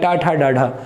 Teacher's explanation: ये टा ठा डाढ़ा जितने भी हैं मूर्धन्य व्यंजन हैं, तो मूर्धा से इनका उच्चारण होता है